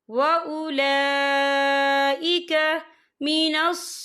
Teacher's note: फिल खैरात व उलाइका, या देखिए व उला, लाम के पर खड़ी हरकत है और इस पर मद भी है, और ये मद जो है मद मुत्तसिल है, इसकी मिकदार जो है 4 हरकत के बराबर है, तो हम इसे 4 हरकत के बराबर खींच के पढ़ेंगे।